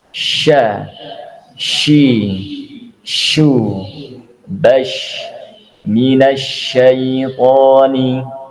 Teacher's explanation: shin itu ya ketika kita menggunakan bagian tengah dari lidah kita dan diikuti dengan menyebarnya angin di seluruh rongga bagian dalam mulut kita.